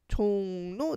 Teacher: 종로, 니은 발음을 하는 비음화가 일어나는 예시예요